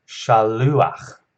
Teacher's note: there is a furtive patak here, so that patak will be pronounced before the chet